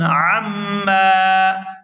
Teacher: عین کو میم مشدد کے ساتھ ملائیں گے تو غنہ کریں گے